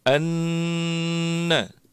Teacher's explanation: huruf nun tasydid ini harus didengungkan yang cukup. Anna. 3 harokat di situ.